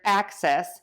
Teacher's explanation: think about ending in us, because that is the schwa vowel at the end there